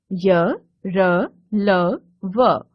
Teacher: व्यंजनों के बीच का लगता है उन्हें अंतस्थ व्यंजन कहते हैं इनके उच्चारण के समय जीभ मुख के किसी भाग को पूरी तरह स्पर्श नहीं करती